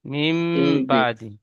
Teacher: নুন সাকিনের পরে বা এসেছে। তাই নুন সাকিন আওয়াজকে এই ছোট্ট মিমের দ্বারা পরিবর্তন করে পড়তে হবে। মিম নুন জের মিম ছিল।